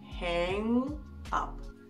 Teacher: Этот звук «н» немного меняет эту гласную, и она начинает звучать скорее как дифтонг «a», как в слове «name»